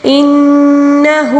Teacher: ہو کو ایک الف کے برابر کیونکہ الٹا پیش کو ہم نے ایک الف کے برابر کھینچنا ہوتا ہے